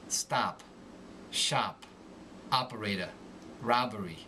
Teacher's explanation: the short o becomes more nasal